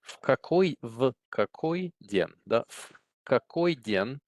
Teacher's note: the V is pronounced together with the какой, so it gets devoiced and it becomes more of an F. So it's slurred together with the next word.